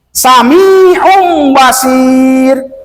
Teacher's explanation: Maka tanwin domah tukarkan kepada mim, maka menjadi samiun basir. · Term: iqlab